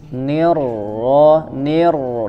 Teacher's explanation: di huruf rnya tetap dialirkan suaranya ada suara yang mengalir jangan diputus jangan nirirahim tidak terputus suaranya tapi tetap mengalir ulangi [Musik] Bismillahirrahmanirrahim